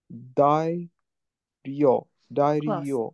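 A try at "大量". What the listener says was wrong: Tai ryo. No rendaku.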